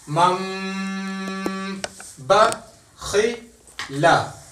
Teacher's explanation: تو نون ساکن اور تنوین کے بعد لفظ با آ جائے تو اقلاب کرتے ہیں, نون ساکن کو میم سے بدل کر غنے کے ساتھ پڑھتے ہیں